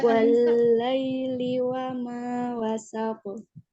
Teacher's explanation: Jadi qalqalahnya kubro besar, tapi langsung tidak ada jeda di situ. Jangan seakan-akan ditahan. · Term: qalqalah kubro